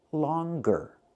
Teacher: But with the word longer, we pronounce the g